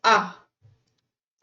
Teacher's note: जैसे आ जब हम बोलते हैं तो पूरा मुंह खुलता है ना, उसे हम विवृत स्वर कहेंगे।